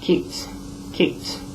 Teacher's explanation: When a whispered sound ends a root word, ed joins the word in a whispered T sound.